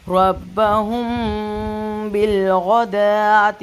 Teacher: میم ساکن کے بعد ہے با، تو اس کی ٹائمنگ ہوگی 2 سیکنڈ، میم کو 2 سیکنڈ کے لیے اپنے منہ میں رکھیں گے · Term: اخفاء شفوی